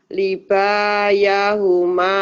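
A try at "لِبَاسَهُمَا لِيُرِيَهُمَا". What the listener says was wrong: libasa, bukan libaya, libasa. Libasahuma liyuriyahuma.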